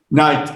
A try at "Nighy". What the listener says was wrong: No, bueno, Nighy, nomás quítale la T. Nighy.